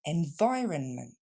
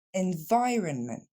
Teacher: On ne va donc pas dire environment ou environnement, mais bien environment. L'accent tombe sur le son vi, la deuxième syllabe.